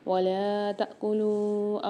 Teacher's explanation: کلو میں لام کے ساتھ واو مدہ اور مد آ رہا ہے تو یہاں 3 سے 4 الف کی مقدار کھینچ کے پڑھیں گے لام کو · تا کے ساتھ جو الف آ رہا ہے اس پہ سکون آ رہا ہے یعنی جزم، تو اس کو ہم جھٹکا دے کے پڑھیں گے تا کو